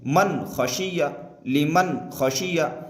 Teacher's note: اس نون ساکن کی آواز کو ظاہر کر کے بغیر غنہ کے جلد پڑھیں گے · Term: اظہار